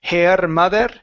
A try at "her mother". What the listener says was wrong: Okay, so right now you're saying hair, like on top of your head. That is hair. Okay, instead of hair, it's her. This is an R vowel. Her. That's the sound. That's the sound.